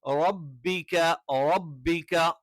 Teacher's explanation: ക നാവിന്റെ ആരംഭം അതിന്റെ തൊട്ടുമുകളിലുള്ള അണ്ണാക്കിന്റെ ഉറപ്പുള്ള ഭാഗത്ത്